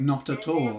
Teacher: we're going to connect this a from all to the t and make a syllable there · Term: connected speech